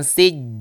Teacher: Min, nah ini juga ada gunnahnya dan dipanjangkan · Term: gunnah mutawwalah